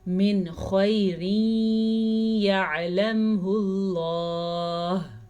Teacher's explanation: نون ساکن کے بعد خا حروف ہلکی میں سے ہے تو ہم نون ساکن کو ظاہر کر کے پڑھیں گے، بغیر غننے کے پڑھیں گے. اسے کہتے ہیں اظہار.